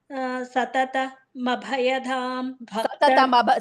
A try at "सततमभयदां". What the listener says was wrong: Don't say mabhayadam. It is satatam abhayadam. But you together it's satatam abhayadam.